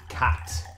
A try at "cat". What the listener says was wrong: a little further back,